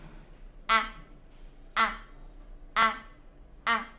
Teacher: các con phát cái âm A của tiếng Việt một cách dứt khoát, tức là âm A ngắn chứ không phải là kéo dài nhá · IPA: /æ/